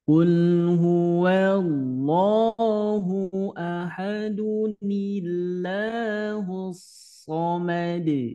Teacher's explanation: yang asalnya lafaz Allah tebal menjadi tipis karena sebelumnya didahului oleh harakat kasrah itu ya ketika di wasol atau disambung begitu berikutnya ke ayat